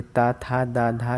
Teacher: ये ता, था, दा, धा, ये कहलाते हैं दंत व्यंजन, जो दांतों से थोड़ा लगते हैं